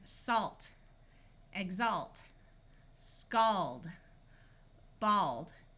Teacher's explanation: the end of a root word the a will have its broad a sound of ah